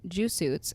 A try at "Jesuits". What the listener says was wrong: Did you just say Jew suits? Like a Jew suit? Like you're saying a Jewish person in a suit? Jew suit? You're trying to say Jesuit, yeah? You're trying to say Jesuit, or you're trying to say Jew suits? You said Jew suits? Jesus, like a Jewish person in a suit?